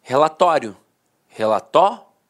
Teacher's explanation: a penúltima sílaba era a sílaba mais forte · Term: paroxitona